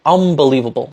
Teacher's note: You probably think you're saying unbelievable, but in reality, most people are probably saying unbelievable because the B is a bilabial sound produced with the two lips, just like an M, the N assimilates to become an M